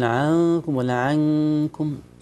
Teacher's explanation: فيه غنه في الاخفاء نون ساكنه مخفاه عند الكاف